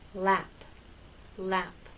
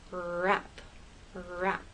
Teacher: the tip of your tongue for L and lap touches that bump and the sides are down